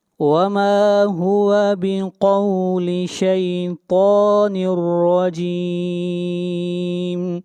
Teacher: طا کو موٹا پڑھیں گے، شیطان الرجیم۔ یہاں پر تنوین کے بعد حروف یرملون میں سے را ہے، یہاں پر ادغام بلا غنہ ہوگا اور را کو موٹا پڑھیں گے، را کے اوپر فتحہ ہے۔